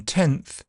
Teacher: tenth is in a different position to the n in 10 in tenth it has become Dental so it's changed position